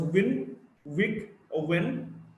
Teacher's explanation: W, voiced bilabial approximant.